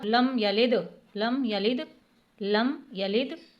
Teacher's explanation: یہاں پہ قلقلہ ہوگا کیونکہ قلقلہ کا حروف دال آ رہا ہے